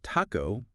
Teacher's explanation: a softer t almost like a d